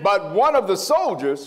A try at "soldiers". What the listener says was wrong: Sound like you said one of the souls. Yeah, take your time and read it. Make it clear. Make it plain.